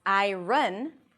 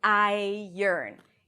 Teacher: It's not pronounced as 'aɪ-rən', but aɪ-ərn.